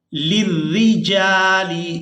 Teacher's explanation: یہاں را کو باریک ادا کریں گے کیونکہ اس کے نیچے زیر ہے